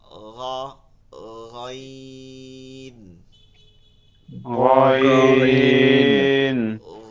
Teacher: আইন জি। এরপরে গ হবে হলকের শেষ এইখানটা দিয়া তালুতে গিয়ে লাগবে হালকা একটু নরম আওয়াজে।